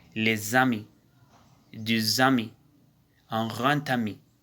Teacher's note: S et X devient Z et D devient T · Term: liaison